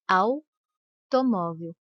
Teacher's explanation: Se você respondeu que o A é a vogal e o U é a semivogal, você acertou. Repare que o A é pronunciado com mais intensidade que a letra U. Automóvel. O U quase não aparece, por isso ele é chamado de semivogal.